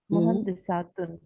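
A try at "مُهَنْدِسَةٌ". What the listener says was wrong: मुहंदिसातुन नहीं बोलेंगी, मुहंदिसतुन बोलेंगी, क्योंकि जब आप मुहंदिसातुन करेंगी ना, सातुन, तो वो फिर जमा बन जाएगी, ठीक है, वो जमा बन जाएगी। आप मुहंदिसातुन जब बोलेंगी तो वो जमा बन जाएगा, प्लूरल बन जाएगा।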